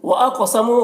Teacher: क़ाफ को पुर पढ़ना है और क़ाफ में कलकला करना है। मुँह में वाव मद्दा है, एक अलिफ के बराबर खींचेंगे।